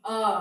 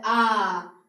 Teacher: अ जल्दी पढ़ लिए। कम समय लगा। उसके बाद आ ज्यादा लग रहा है ना? दो गुना आ।